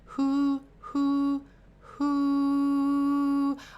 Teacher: you can give them the little H at the front, the little fricative, who, like be a little owl, who.